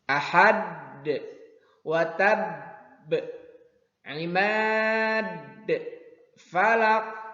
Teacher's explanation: adanya di akhir kalimat, di akhir ayat, hurufnya berharokat karena diwaqafkan menjadi sukun, dan ketika dibaca ada pantulannya. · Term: qalqalah kubra